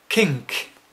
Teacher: it's a voiceless velar plosive again why is it plosive because the nose is closed off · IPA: /k/